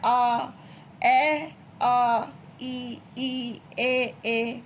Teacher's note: और ये अव्रत हो जाता है, यानी कि यहाँ पे कोई भी गोले मुंह को गोल नहीं किया जाता, ठीक है। अब अव्रत मुखी, इनमें होठ गोल नहीं होते